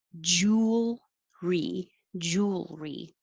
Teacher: it's almost three syllables but we don't make it clearly three syllables